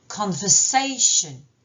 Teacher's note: l'accent de mot, l'accent lexical se porte sur la syllabe say